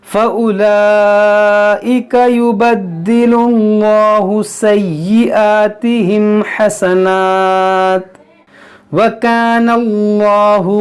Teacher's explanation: اس میں جلالت اللہ عز و جل کے لام سے پہلے پیش ہو یا زبر ہو تو موٹا پڑھیں گے